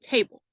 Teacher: So we have one stressed syllable, tay, and one unstressed syllable, bull.